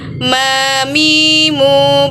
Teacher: huruf mim atau Ma dikeluarkan dengan cara melepaskan bibir kita